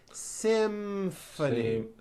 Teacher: this is a tricky one because you've got the M sound followed by an F sound